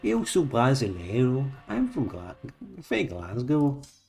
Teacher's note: that Brazilian has that sort of rising intonation twang, and so does Glaswegian